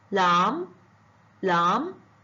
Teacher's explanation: شوفوا هاي الما بعدها البي ما طول اكو ما وراها حرف بي، فالما الباء ما ينلفظ، حتى بالكتابة الصوتية لا يوجد البي